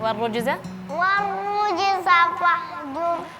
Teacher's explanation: Jadi waw di sini seharusnya tipis wa. Terus setelahnya ada ro yang tebal. Jadi jangan sampai bacanya warrujza.